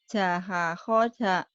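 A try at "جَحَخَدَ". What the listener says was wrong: Abadasa jaha khoda. Jangan da-nya jangan ba-nya jangan tebel. da.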